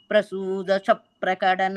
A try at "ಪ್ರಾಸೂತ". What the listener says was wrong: ತಿರುಪಿ repeat ಪ್ರಸೂತ ಇಲ್ಲ ಪ್ರಾಸೂತ